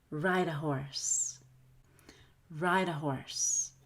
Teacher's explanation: it's a very fast d where you just flutter your tongue and touch the top of your mouth as lightly as possible